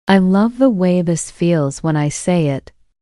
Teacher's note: pay attention to how the stressed words create a natural beat. Love, way, feels.